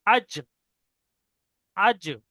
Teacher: পুরো জিভের মাঝখানটা উপরে তালুর সঙ্গে লাগবে। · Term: জিম